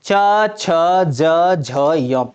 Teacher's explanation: इन सभी वर्णों का उच्चारण स्थान कहां से होगा? तालु से होगा। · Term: तालव्य